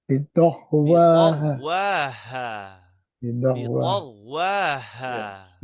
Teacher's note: It's ta, but you are pronouncing as if the da, bidah. There's a voiced sound. It's not voiced.